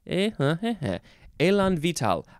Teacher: I don't think there's any syllable that gets more emphasized.